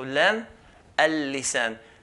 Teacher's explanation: Lam is pronounced on the edge of the tongue as well.